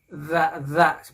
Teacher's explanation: ujung lidah kita tempelkan pada gigi kita yang paling depan tapi yang atas